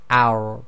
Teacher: the bottom of the tip of your tongue touches the roof of your mouth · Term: ra